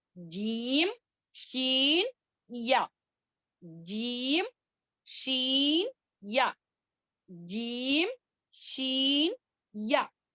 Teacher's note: pronounced from the middle of the tongue and the middle of the palate